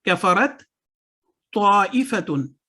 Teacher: تا اور تا کو جب ہم نے ملایا تو پہلا تا نہیں پڑھا گیا, تا کو ہم نے فوکس کیا, اس کو پڑھا.